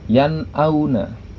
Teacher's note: Nah, di situ ada nun mati bertemu dengan huruf hamzah. Maka nun sukunnya atau nun matinya dibaca jelas, dibaca nun matinya, tidak terpengaruh dengan huruf setelahnya, yaitu huruf hamzah itu. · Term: izhar halqi, idhar halqi